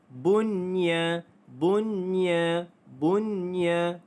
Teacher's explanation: cara bacaannya hendaklah dijelaskan sebutan nun mati tersebut tanpa didengungkan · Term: izhar mutlak